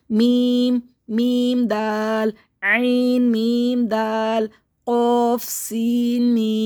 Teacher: ہونٹ بالکل منہ بند کر کے پڑھیں، اور ہونٹوں کے خشک حصے آپس میں لیں گے تب تو میم ادا ہوگا